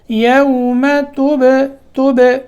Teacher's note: با میں قلقلہ ہوگا